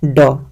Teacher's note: मूर्धन्य अल्प प्राण, मूर्धन्य से होना चाहिए, अल्प प्राण होना चाहिए, घोष व्यंजन होना चाहिए